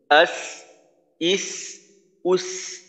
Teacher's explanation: আর একটা বিষয়, কারো কারো ক্ষেত্রে দেখা যায় সিনে যখন জজম হয় তখন আওয়াজটা ঠিক মতো চালু থাকে না। তো সিন তো রেখুয়ার হরফ, আওয়াজকে চালু রাখতে হবে।